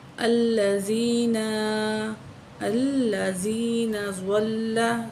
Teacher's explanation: ज़्वाद को मोटा करेंगे और लाम को ऊपर तशदीद है